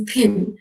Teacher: for a native speaker when they say the word pin they would you know produce it with a little bit of aspiration